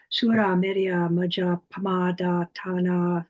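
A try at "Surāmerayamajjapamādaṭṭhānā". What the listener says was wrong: You didn't quite pronounce it as a double, but you paused slightly. In fact, I have heard monks chanting, doing it that way, as if somehow they don't quite dare to double it, but equally want to make it a heavy syllable.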